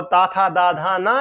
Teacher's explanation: ता, था, दा, धा, ना, ये दंत से बोले जाते हैं